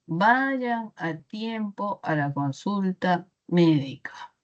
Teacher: Ya es una oración enunciativa, ¿okay? Una oración enunciativa y las oraciones enunciativas tienen tono descendente.